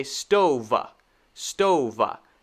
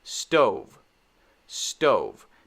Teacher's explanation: be careful not to add va after the v sound so you don't want to say stova stova this is not